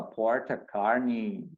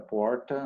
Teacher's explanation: O R bem retroflexo, bem característico do inglês texano, inglês americano texano, né? Tem um R muito forte.